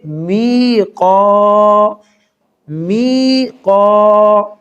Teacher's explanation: یہاں میم کو تھوڑا سا ہم کھینچ کر پڑھیں گے، می، قاف کے اوپر زبر اور اس کے بعد الف ہے تو یہ الف مدہ ہے، یہاں قاف کو ایک درجہ کھینچ کر پڑھیں گے